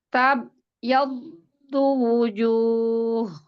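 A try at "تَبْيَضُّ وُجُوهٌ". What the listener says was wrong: Mbak, kan ada qalqalah ya? hati-hati pas baca wu-nya. wu ke wu itu mulutnya emang harus tabayaddu wujuh. Jadi wu-nya harus lafaz lagi supaya bunyinya kedengeran. Karena Ana tadi dengarnya jadi kayak bujuh gitu. Nggak terlalu kedengeran wu-nya soalnya.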